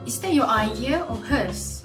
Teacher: There is an audible linking process in speech. She utters a clear linking r sound, resulting in the pronunciation as your idea. This leads to smoother transition from r in your to ayin in idea, which reflects the use of connected speech that are usually found in fluent English language.